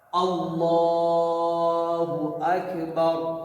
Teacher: سب سے پہلے اذان میں ہو یا اقامت میں اللہ اکبر ہے، اذان میں 4 دفعہ، اقامت میں 2 دفعہ ہے. اللہ اکبر، اللہ موٹا اور اکبر کی کاف پہ تھوڑا سا ہمس کریں گے، اکبر، را کو ہم موٹا پڑھیں گے، بار کھینچیں گے نہیں.